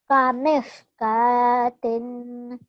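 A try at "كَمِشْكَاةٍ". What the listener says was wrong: well done.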